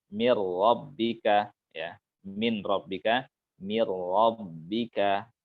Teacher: Jadi takrir itu getarannya samar